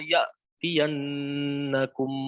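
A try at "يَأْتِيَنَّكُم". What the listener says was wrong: Ya, jangan ya'tiyan itu ikhtilas ya. Ya'tiyan. Jangan tiyan. Ikhtilas itu mengurangi daripada kadar harokat, ya. Itu ikhtilas. Ya'tiyan. Harusnya tiyan. Jadi bukan tian. Nah, itu sudah berkurang kadar harokat. Satu harokatnya sudah berkurang. Ya'tiyan. Nah, harusnya tiyan.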